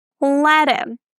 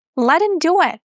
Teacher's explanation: We can drop the H and say let him. Again, if we drop the H, the T is going to be between two vowels. That's why we have a flap T.